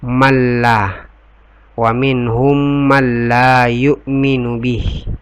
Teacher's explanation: Karena nun sukun ketemu dengan la, itu cara membacanya tidak berdengun. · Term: idgham bigunnah